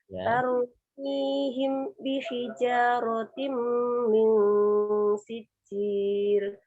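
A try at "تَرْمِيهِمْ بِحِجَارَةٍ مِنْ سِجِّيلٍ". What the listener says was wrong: Titik pertama dibaca idhar. Jangan diputus. Tarmihim bi. Tadi diputus ini. Ditahan. Tarmihim bi.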